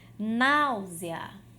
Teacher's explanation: Porque eu tenho aí uma palavra que em sua essência é uma paroxítona, náusea. Náusea, eu tenho a sílaba tônica, a sílaba nau, mas eu também posso separar da seguinte forma: náusea, náusea.